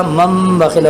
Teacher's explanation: نون ساکن یا تنوین کے بعد اگر با آ جائے تو اس نون ساکن کو میم سے ملا کر پڑھا جاتا ہے، میم سے تبدیل کر کے اسے پڑھا جاتا ہے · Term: اقلاب